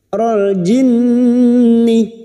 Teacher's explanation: nun yang bertasdid gunna musyaddadah kita dengungkan selama 3 harakat